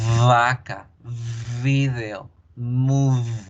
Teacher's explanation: La V o V labiodental no genera una plosión. Ella permite que el aire continúe saliendo. Entonces, a lo largo que el aire va saliendo de la boca, va generando el sonido.